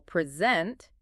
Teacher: But if we stress the second syllable, present, it becomes a verb